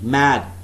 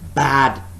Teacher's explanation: we could substitute the initial bilabial nasal M with the bilabial plosive B. B is also bilabial, but that is a plosive sound.